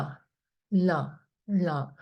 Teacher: Na is long, A is long, and then the N has a dot underneath. It means the bottom of the tongue touches the dome of the palate. So you have to roll the tongue back and then na.